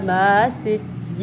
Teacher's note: Ma itu mat tabi'i panjangnya 2 harakat. Sijjin itu mat arid disukun panjang 2 atau 4 atau 6 harakat.